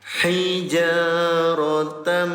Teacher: Cara bacanya dengungkan selama 2 harokat. Ya, tempelkan dulu bunyi tanwinnya disertai dengung selama 2 harokat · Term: idgham bigunah